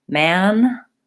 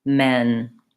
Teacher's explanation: We're going to do the A vowel, the more open vowel first, and then the E vowel.